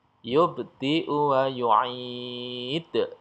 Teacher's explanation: di pemberhentian ini ada huruf-huruf qalqalah yang dibaca dengan tebal, dipantulkan dengan besar, ya, pantulannya besar, ya. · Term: qalqalah kubro